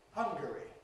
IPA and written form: ˈhʌŋgəri (Hungary)